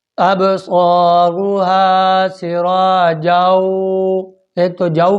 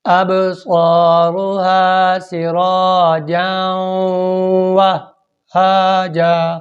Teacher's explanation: واو کو ہا سے کنیکٹ کیا، ملایا، اور پھر 1 سیکنڈ کا سٹاپ شد کی علامت ہے، شد کی ادائیگی کی علامت ہے۔